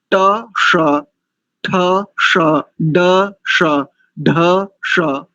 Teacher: जिस प्रयत्न के साथ ट वर्ग बोल रहे हैं उसी प्रयत्न और उसी रीति के साथ इस मूर्धन्य सकार का उच्चारण करेंगे तो शुद्ध हो जाएगा कैसे तो देखो ट ठ श ड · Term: मूर्धन्य शकार